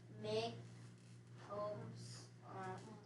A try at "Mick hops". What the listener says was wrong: Why is it hops and not hopes? It doesn't have an E. It's a closed syllable. I see a O followed by a P. So it is closed. We code that O with a brief.